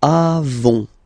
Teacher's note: nous avons, final S not pronounced, avons.